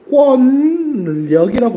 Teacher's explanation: 니은과 리을이 만나는데 유음화가 되지 않았다